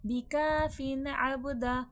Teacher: यहां पर इजहार हलकी का कायदा होगा। बगैर गुना के पढ़ा जाएगा। यह वर्ड अबदा बा में खलखले की सिफात वाज़ होगी।